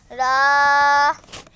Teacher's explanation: জিহ্বার আগার পিঠ তার বরাবর উপরের তালুর সঙ্গে লাগাইয়া